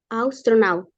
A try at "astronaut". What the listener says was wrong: No, está diciendo naut. Una vez más. Astronaut. Astronaut. Not. Not.